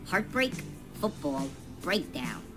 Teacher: the words heartbreak football breakdown are examples of a one-word spondy both syllables are stressed